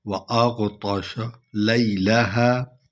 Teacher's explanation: أغطش طا کو پر پڑھنا ہے